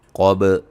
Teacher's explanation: क़ाफ को मोटा, बा पे क़लक़ला